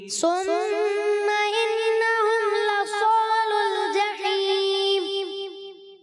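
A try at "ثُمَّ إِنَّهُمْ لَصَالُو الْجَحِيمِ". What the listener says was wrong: سین ہو گیا یہ ثم.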